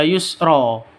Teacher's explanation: ada tanwin terus diikuti dengan Alif maka cara bacanya dibaca Yusron ketika wakaf itu dibaca Yusro panjang panjang dua harakat itu disebut dengan mad iwad